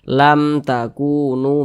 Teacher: maka hukumnya Izhar Syafawi baca jelas tidak berdengung pendek saja kita baca lam takunu begitu Jangan dibaca lam takunu jangan pendek